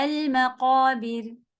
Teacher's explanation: را کو باریک کریں گے کیونکہ اس کو کسرہ سے ملا رہے ہیں